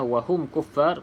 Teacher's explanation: pastikan mim mati disebut dengan izhar iaitu jelas rapatkan bibir atas dan juga bibir bawah